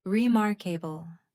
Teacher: Remarkable. The strong beat is on the second syllable.